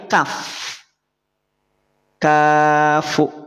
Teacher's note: istifal itu adalah ketika kondisi ketika pangkal lidah tidak naik pada saat mengucapkan huruf Kaf